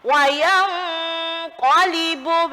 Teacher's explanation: Qaf ini huruf tebal. Jadi ketika mendengung sudah siap-siap tebal. Jadi nggak boleh dengan wayang ko harus tebal.